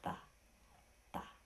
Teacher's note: This is what's called a dental sound in Sanskrit. And so what you do is you take your tongue and put it behind your top front teeth and you say ta, ta.